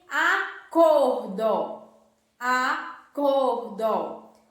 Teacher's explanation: Cor é a sílaba mais forte e ela está aí na penúltima sílaba. Então, nós temos uma palavra paroxítona.